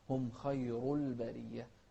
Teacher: التفخيم في الخاء والراء